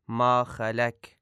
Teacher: ما خلق میں جو قاف ہے اس کو باریک ادا کیا جاتا ہے